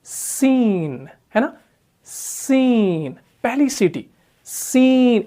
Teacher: सीन जो है ये भी मुरक्कक है, ये भी बारीक पढ़ा जाने वाला हरफ है क्योंकि इसके अंदर भी सिफत इस्तिफाल है। जब भी हम सीन को पढ़ते हैं तो इसके अंदर पहले ही जो है ना सीटी बजती है